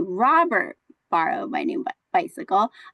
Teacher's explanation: I'm emphasizing Robert and not someone else